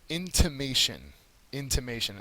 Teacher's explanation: the third syllable is accented